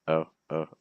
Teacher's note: see how my lips stay straight I don't need to round them it's not necessary to round your lips for this so you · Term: o sound